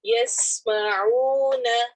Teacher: عین حروف حلقی میں سے، حلق کے درمیانی حصے سے ادا ہوتا ہے. اور واو ساکن سے پہلے چونکہ ضمہ آ رہی ہے اس لیے ہم اس کو بھی تھوڑا سا لمبا کریں گے.